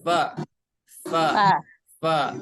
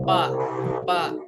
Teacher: dari ujung gigi seri yang atas, maaf ya, menempel ke perut bibir bagian bawah yang basahnya. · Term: huruf fa